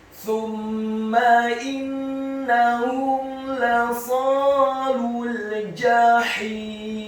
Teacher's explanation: Kata jahim, huruf jimnya dibaca tafkhim, tebal, fathah 1 harokat. Huruf ha-nya dibaca tipis, tartiq, nyaring dan halus, kasrah 2 harokat karena setelahnya ada ya sukun.